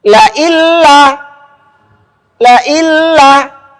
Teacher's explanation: Menunjukkan bahwa dengung itu memang tidak ada ketika nun dimasukkan ke huruf lam.